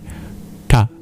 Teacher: the bottom of your tongue touches your hard palate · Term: retroflex sounds